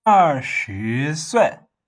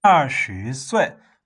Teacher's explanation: Just falling, rising, and falling.